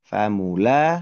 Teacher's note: Oke, dua tempat yang panjang ya, bunyi panjang di kata famulaqih, yaitu huruf lamnya dibaca panjang